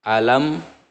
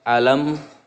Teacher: mimnya itu tertutup ya, si mulut kita tertutup karena ini hukum huruf mim itu keluar hurufnya dari bibir. Alam, mimnya jelas. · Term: idhar safawi